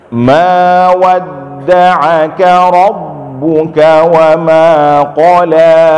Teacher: ain diperjelas lagi, jangan sampai masuk ke hidung. Tadi qaf agak terdengar agak tipis sedikit, ya.